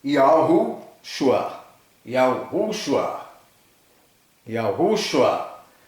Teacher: com a tonicidade na segunda sílaba. Ou seja, a sílaba mais forte é a segunda.